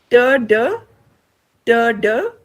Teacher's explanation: Ter, it is the blade of the tongue. Ter, blade of the tongue against the alveolar ridge